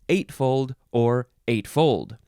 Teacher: 8, you can emphasize either syllable, eightfold or eightfold